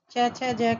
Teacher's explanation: च छ ज के उच्चारण में वायु रगड़कर रगड़ खाकर निकलती है। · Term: चै वर्ग